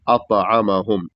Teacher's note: تو کو موٹا بھی کرنا ہے اور اس کو واضح بھی کرنا ہے